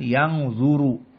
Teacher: Berarti yang zu harus tafkhim.